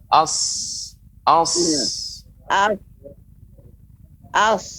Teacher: Akan tapi tidak boleh monyong ya Ibu, tidak boleh aus, tapi as. Ini tetap datar. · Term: huruf sin